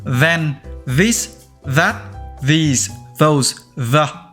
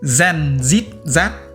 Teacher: Âm the đọc bằng cách cũng đưa lưỡi giữa hai hàm răng, nhưng thay vì xì hơi thì bạn rung lưỡi như khi bạn đọc chữ r vậy. Đầu tiên là đưa lưỡi giữa hai hàm răng, sau đó rung lưỡi.